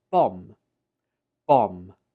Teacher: In written English, this is spelled with the letter B, but when we speak it, we omit the B and just pronounce it as bomb. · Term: silent B